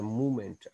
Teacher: अब मूवमेंट में देखें फॉल है और फिर राइज है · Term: fall rise intonation